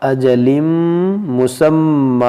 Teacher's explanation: اب یہاں پر آپ غور کریں کہ تنوین کے بعد جو ہے یہاں میم ہے، تو یہاں پر ادغام کریں گے، یعنی کہ ہم ناک میں آواز لے جائیں گے اور غنہ کریں گے